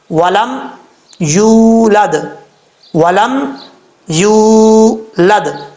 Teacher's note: واو ساکن سے پہلے پیش ہو تو واو مدہ ہوتا ہے، یہاں پر واو ساکن سے پہلے پیش ہے، یہاں پر واو مدہ ہے، ایک الف کی مقدار اس کو لمبا کر کے پڑھیں گے